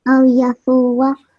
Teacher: you are giving more than 1 second to foo. It's just 1 second.